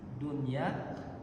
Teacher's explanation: Dunia dinamakan dengan izhar mutlak. Izhar mutlak itu walaupun dia bertemu dengan ya atau bertemu dengan wau, maka dia tetap dibaca jelas.